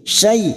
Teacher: fathah bertemu Ya Sukun kita lunakkan huruf Lin